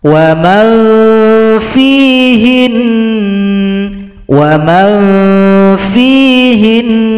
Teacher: nun disukunkan, berikan bunyi dengungan